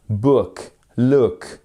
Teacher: ça se prononce comme un ou court